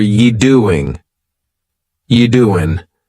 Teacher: you doing you doing we're dropping that G again